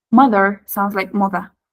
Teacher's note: Mother sounds like mother, right? It's so soft and no R.